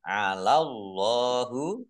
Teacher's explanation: Allahnya dibaca tebal karena harokat di depannya fathah. Lam fathah berdiri matobi'i.